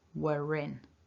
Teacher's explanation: Now looking at the script there, we've got the w at the beginning, the which is a long vowel like in the word nurse, and in the script you'll see that there's this small r just positioned at the top. That's a linking r, and that becomes activated if the next word begins with a vowel sound.